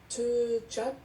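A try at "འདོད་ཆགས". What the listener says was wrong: Deux tcha. C'est pas te tcha, c'est deux tcha.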